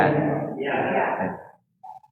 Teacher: Huruf ya juga sama dari tengah lidah ya, tapi dinaikkan sedikit aja ya.